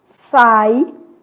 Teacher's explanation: Ditongo oral, pronunciado pela boca.